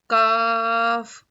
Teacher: जुबान की जड़ को ऊपर के टालू में लगाने से काफ अदा होता है